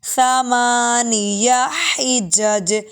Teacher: زبان کو دانتوں کے نیچے لے کر آئیں گے تو ثا کی آواز آئے گی